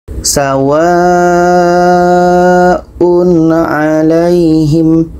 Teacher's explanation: tanwin bertemu a, izhar halki, tidak dengung.